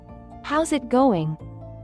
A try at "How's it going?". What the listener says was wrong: Good start. Now, try to make it a bit quicker, and really connect those words.